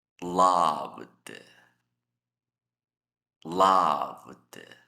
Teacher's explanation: Igual esta lista, todos terminan en sonidos sonoros. El ED se pronuncia con D. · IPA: /d/